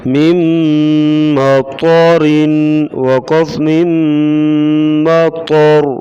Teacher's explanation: وقف، وقفاً جو ہے را کو باریک پڑھیں گے، وصلاً را کو باریک پڑھیں گے، وقف کریں گے تو را کو پر پڑھیں گے